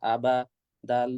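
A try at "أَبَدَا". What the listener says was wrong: আবাদা। আবা টান হয়ে যাচ্ছে, এটা বদ অভ্যাস আপনার। আবা, আবা বলে থেমে যান। হরকতের উচ্চারণ টান ছাড়া দ্রুত পড়তে হয়। হরকতের উচ্চারণ টান ছাড়া কি করে পড়তে হয়? দ্রুত পড়তে হয়। আপনি দ্রুত করেন নাই। তো না হলে, যদি মুখ দিয়ে উচ্চারণ না হয়, তাহলে অনুগ্রহ করে 4 নম্বর দার্সে যাবেন, 29টা হরফ 2 মিনিটে ভালো করে পড়ে আসবেন, আবার এখানে ব্যাক করবেন।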